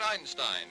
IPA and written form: ˈaɪnstaɪn (Einstein)